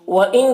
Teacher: وَإِن کے نون میں اخفا ہو رہا، نون کی آواز کو ناک میں چھپا کر پڑھیں گے